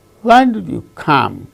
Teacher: are the content words when you come when did you come when come these two are stressed the other words are not stressed in the sentence